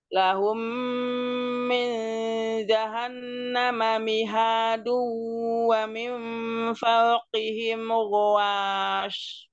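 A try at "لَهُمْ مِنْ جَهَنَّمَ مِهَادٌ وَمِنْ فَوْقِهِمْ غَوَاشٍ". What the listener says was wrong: Jangan naik, nawas, jangan. Nawas, turun aja wawunya turun. Karena huruf tipis.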